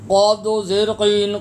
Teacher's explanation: ڈنڈی والا کاف نہیں پڑھنا، موٹا اور پر کاف پڑھنا ہے۔ زبان کی جڑ جب تالو کے ساتھ لگے گی تو آپ کا قاف ادا ہوگا